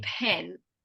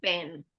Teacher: I'm doing exactly the same thing with my mouth the first one I'm not using any voice and the second one but I am using my voice okay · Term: voiceless